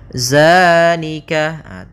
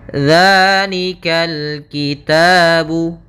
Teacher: tidak dibaca dengan zai, akan tetapi dengan zal, ujung lidahnya menempel dengan gigi seri atas